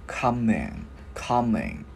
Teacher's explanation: Cái mình ngân cái chữ ng ra